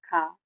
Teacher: अघोष महाप्राण धुन ख है